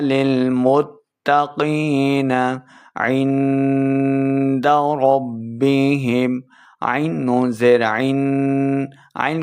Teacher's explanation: عین کا مخرج ہے حلق کے درمیان والے حصے سے، آگے نون ساکن ہے، نون ساکن کے بعد آگے دال حروف اخفاء میں سے ہے، نون ساکن کے بعد دال حروف اخفاء میں سے ہے، تو یہاں پہ اخفاء کا قاعدہ کریں گے، یعنی ہم نے غنہ کرنا ہے، عندہ نہیں کریں گے، پڑھیں گے عندہ عندہ ربهم۔